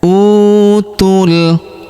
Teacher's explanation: huruf u kita panjangkan dua harakat karena wau sukun di depannya